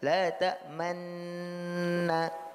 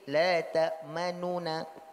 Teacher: Pertama adalah ismam, seperti yang kita sampaikan kemarin, la ta'manna. Kalau ismam dia idgham, tapi ada isyarat dari mulut berupa isyarat dhamma.